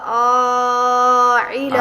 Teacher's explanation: عین حلق کے درمیان سے